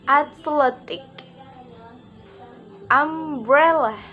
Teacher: Secondary stress is on the first syllable and primary stress is on the second syllable. The other syllables are unstressed. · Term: stress pattern 5